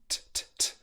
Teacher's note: Then we get to the second syllable, which is very simple. It's the T sound, t, t, t, which should be an aspirated sound